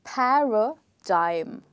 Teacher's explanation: when you say the first part, there is air coming out of your mouth and you put in more energy